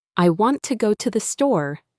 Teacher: the stress falls on want and store, while to and the are softer.